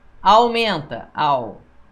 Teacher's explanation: Ditongo decrescente, o A é mais forte que o U.